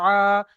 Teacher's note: হামজার উপরে খাড়া জবার এসছে। খাড়া জবারটি হলো আলিফ মাদ্দার সমতুল্য। একে এক আলিফ প্রমাণ টান দিয়ে পড়তে হবে।